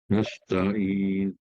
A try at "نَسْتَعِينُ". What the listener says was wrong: Bunyi nu. Tapi jangan satu harkat. Nu, itu satu harkat. 1/3. Sikit je. Perlahankan suara. Nu. Sikit, laju. Nasta'inu.